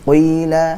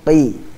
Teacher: huruf qaf ini hanya memiliki sifat isti'la, tebal saja, bukan memiliki sifat itbaq, tebal sekali